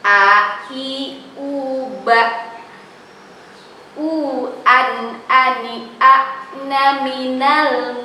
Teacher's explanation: ketika kita mengucapkan A, itu dari mana? Tenggorokan bagian bawah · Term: hamzah